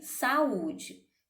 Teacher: hiato o hiato nós vamos ter esse fenômeno fonético quanto temos duas vogais que se encontram mas quando nós separamos as sílabas nós vemos que elas ficam em sílabas diferentes